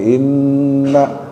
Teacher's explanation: Kalau yang ini inna pendek maknanya. Inna tapi sama-sama dengung ya gunnah. Karena ada nun yang ditasydid.